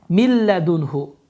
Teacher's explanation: Bu qayda zamanı da n səsi oxumur, ləm səsi isə şəddələnir. Ləm hərfi isə şəddələnir. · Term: idğam bilağun